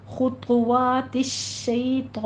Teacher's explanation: शैतान में शई को लंबा नहीं करना है, ये सिर्फ या लीन है, 1 से 2 हरकतों के दरमियान बस पढ़ना है। खुतवातिश शैतान, इन्नहू में गुन्ने वाजिब अदा करेंगे, 2 काउंट करना है।